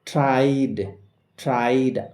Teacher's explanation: ট্রাইড, ট্রাইড, আই sound রয়েছে, এই যে আই সাউন্ড, এই আই সাউন্ডটা হচ্ছে একটা ডিপথং বা যৌগিক স্বর, আই সাউন্ডের পরে ইডি রয়েছে, তাই ইডির উচ্চারণ ড এর মতো